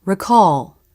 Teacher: the dark part is made with the back of the tongue as the jaw closes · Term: dark l